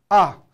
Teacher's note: 그 다음에 마지막 하강조, 일성조는 위에서 아래로 이렇게 떨어지는 겁니다. 급격히 높은 음에서 아래로 떨어지는 것입니다.